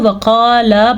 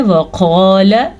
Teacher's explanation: وقال پھر سے موٹا قاف ہے، اسے پر بھی پڑھنا ہے. اور لام کو لمبا نہیں کرنا کیونکہ لام زبر لا ہے. اگر آپ اس کو وقالا پڑھیں گے تو آپ نے غلطی کر دی، یہ غلطی ہے.